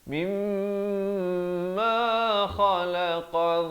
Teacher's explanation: kha di ujung kerongkong, qaf di pangkal lidah